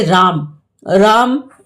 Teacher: शब्दों का अंत अ का उच्चारण में लोप होने लगा